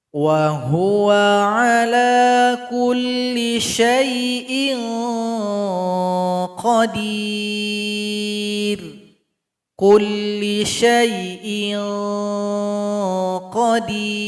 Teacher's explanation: Jadi di sini bunyi ikhfanya mengarah kepada huruf qaf, ke pangkal lidah. Jadi bunyinya ing. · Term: ikhfa adna